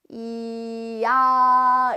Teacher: 근데 야를 발음할 때는 야는 사실 이에서 아로 옮아가면서 소리가 만들어지거든. 그래서 처음 시작은 이야 이렇게 변하면서 이야 야 이렇게 이제 변하면서 입술의 모양이나 혀 위치가 바뀌면서 모음이 된단 말이야. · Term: 이중모음